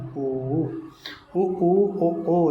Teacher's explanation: वृतमुखी जिसमें गोल होठ हो जाते हैं हमारे। तो ये हो जाता है उ। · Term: व्रतमुखी